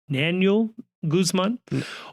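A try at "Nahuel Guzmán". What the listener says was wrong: You're pronouncing a second N. I didn't hear it in the spelling.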